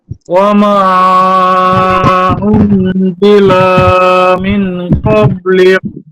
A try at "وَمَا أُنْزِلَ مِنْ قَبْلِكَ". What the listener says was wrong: উনজিলা টান হয়ে গেল, এখানে টান নেই। মিন এখানে গুণনা করতে হবে, মিং।